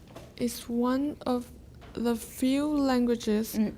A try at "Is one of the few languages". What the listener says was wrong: Pause more.